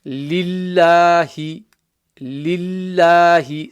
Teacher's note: So the lam there, that first one, has a kasra and it's joining onto the lam with the shadda. So the lam with the shadda becomes empty mouth, not full mouth. · When there is a letter with a kasra before that lam, then Allah subhanahu wa ta'ala's name is pronounced empty mouth.